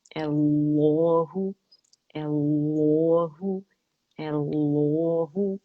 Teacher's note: दोनों लाम मुशद्दद मोटी पड़ जाएंगी